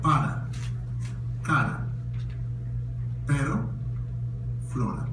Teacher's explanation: The consonant R, when it's between two vowels, the sound is produced by touching the roof of the mouth with the tip of the tongue.